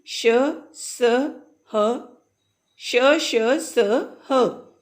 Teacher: जब हम बोलते हैं तो क्या होता है कि हवा जो मुंह से निकलती है वो रगड़ कर बाहर निकलती है, घर्षण के साथ निकलती है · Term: ऊष्म व्यंजन